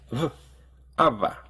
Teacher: a v because that's basically what it is it's made by bringing both of your lips close together but instead of closing them completely to form a b ABA you let a little bit of air through